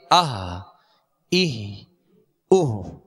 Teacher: اس کو ہم نے ابتدائے حلق سے ادا کرنا ہے، یعنی ہا کی آواز پیدا نہ ہو